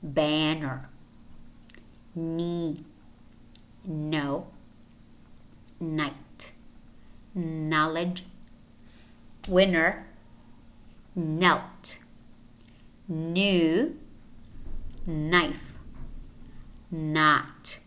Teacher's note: N is a voiced alveolar nasal sound.